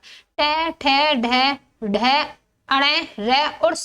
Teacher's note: तो इनका उच्चारण स्तर मूर्धा है। मूर्धा से बोले जाने वाले वर्णों को मूर्धन्य कहा जाता है · इनके उच्चारण में जी्हा ऊपर के दांतों के साथ वाले खुरदरे भाग मूर्धा का स्पर्श करती है।